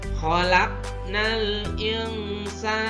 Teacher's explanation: tanwin bertemu dengan huruf ikhfa, dibacanya samar antara jelas dan dengung.